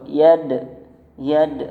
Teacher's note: qalqalahnya qalqalah sughra. Yad ada pantulan kecil situ